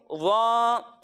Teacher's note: ضا میں سیٹی کی آواز نہیں آئے گی، یعنی اسے پڑھیں گے ضا.